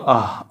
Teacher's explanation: और अ के बाद जो दो बिंदी है विसर्ग, इसका उच्चारण आप कंठ से कहिए। तो अ के बाद जब आप कंठ खोल करके हवा निकालेंगे तो आह ऐसा उच्चारण होगा।